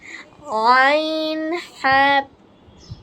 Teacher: হলকের মধ্যখান হতে আইন হা। বলছিলাম না আইন, এটা গলায় চাপাই বলতে হবে আইন, পরে হা।